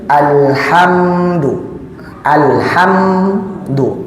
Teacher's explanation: Mim sukun bertemu dengan dal, izhar syafawi. Bacaannya pendek dan jelas.